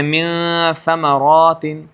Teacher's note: دانتوں کے اوپر تالو کی طرف نون کا مخرج، دانتوں کے نیچے ثا کا مخرج ہے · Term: اخفا